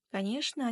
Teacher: ЧН дыбысын, ЧН әріптерін ШН деп айтамыз.